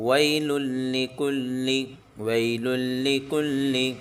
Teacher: دونوں لاموں کو جمع کر پڑھیں گے، پہلے کو بھی دوسرے کو بھی تشدید آ گئی اس لیے ہم یہاں پر جمع کر دونوں لاموں کو پڑھیں گے.